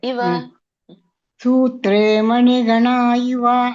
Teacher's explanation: ಇವ ಎಳಿಬೇಡಿ ಮಾತಾಜಿ, ಇವ ಸಣ್ಣ ಇದೆ.